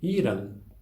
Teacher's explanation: esse an final é como em português, é mesmo uma vogal nasal. E, além disso, ela tem uma duração um pouco maior, né, que vai tornar a sílaba longa.